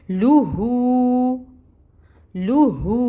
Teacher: ما، پھر لام کے اوپر دمہ یعنی کہ پیش ہے، اس کو بھی 1 حرکت کے برابر پڑھیں گے، اور پھر ہا کے اوپر واو مد ہو رہی ہے، الٹا پیش ہے، تو اس کو 2 حرکت کے برابر پڑھیں گے